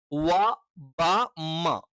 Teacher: വ ബ മ ഈ പറയുന്ന മൂന്ന് അക്ഷരങ്ങളും എന്താണ് രണ്ട് ചുണ്ടുകളിൽ നിന്ന് തന്നെ